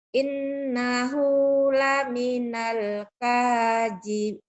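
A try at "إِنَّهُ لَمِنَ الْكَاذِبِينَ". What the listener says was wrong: Innahu panjang.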